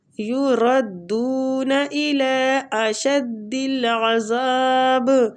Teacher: یہ مد جائز منفصل ہو رہی ہے، ٹھیک ہے، اس کی مقدار 3 الف ہے، 3 حرکات کھینچنا ہے اس کو